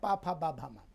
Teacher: ओष्ठ ओष्ठ को मिलाते हैं।